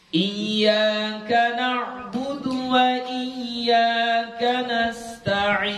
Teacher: kalau kita baca huruf yang terakhirnya adalah huruf nun, itu dia nggak boleh langsung terputus, harus ada sedikit yang masuk ke hidung